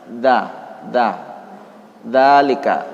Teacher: cara menyebutnya lidah kita berdempetan dengan gigi seri bagian atas